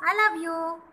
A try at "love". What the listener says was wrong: L ante, O ante, ala kadu. The V ga pronounce chali, W kadu. Man India lo V ni W ga, W ni V ga pronounce chestam. Tappu.